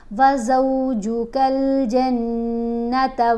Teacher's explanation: نون کے اوپر ہم نے غنہ کرنا ہے، آواز ناک میں جائے گی، ایک حرکت کے برابر ٹھہر کر پڑھا جائے گا